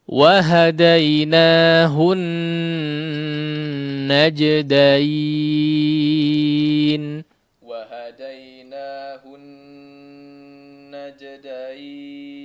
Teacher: nun yang bertasydid, maka gunnahnya dipanjangkan dengan gunnah yang paling sempurna ya.